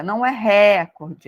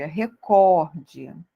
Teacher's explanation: Essa palavra é uma palavra paroxítona, tá? Ou seja, a sílaba tônica dela está na penúltima sílaba, tá? E não na antepenúltima, tá bom?